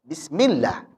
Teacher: Jadi lam pada lafaz Allah jika sebelumnya kasrah maka hukumnya tarqib. Bacanya tipis. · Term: Tarqi tipis, tarqiq